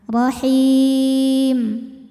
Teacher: Mad tabi'inya ya sukun didahului kasrah, huruf yang disukunkannya mim. Jadi jika berhenti haknya boleh dipanjangkan 2, 4 atau 6 harokat asal konsisten dalam sekali bacaan. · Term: mad arid li sukun